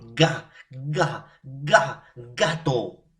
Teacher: Cierre total a la salida del aire. Al momento de pronunciar, no va a salir o va a salir mínimo un aire en su mínima expresión. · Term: fonema oclusivo